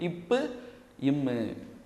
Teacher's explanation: மேல் இதழ் ப்ளஸ் கீழ் இதழ் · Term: இதழ்கள் இணைவதால்